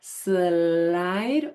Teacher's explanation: a liquid in which the airflow just glides over the tongue of an L or an R